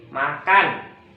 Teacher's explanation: Contohnya kata makan pada ada tuh suku kata ma dan kan. Nah, suku kata kan ini akan dipertegas jadi makan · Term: tekanan